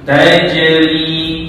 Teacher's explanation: Tajri, cuba. Jim tu kena dilantunkan. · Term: Qalqalah